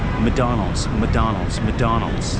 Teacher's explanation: Sometimes you don't even pronounce the C.